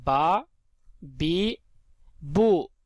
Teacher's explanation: با جو ہے دونوں ہونٹوں کے تر حصے سے ادا ہوتا ہے، اس لیے با کو دونوں ہونٹوں کے تر حصے سے ادا کریں گے۔